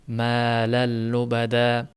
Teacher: Tanvin yo'qolib, lamga to'g'ridan to'g'ri shadda bilan o'tib ketyapti. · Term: g'unnasiz idg'om